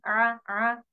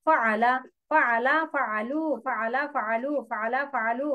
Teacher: আইন একটু গলা কণ্ঠনালীর মধ্যখান থেকে আইন, আ, আ, হা, একটু চেপে কণ্ঠনের মধ্যে একটু চাপ দিয়ে।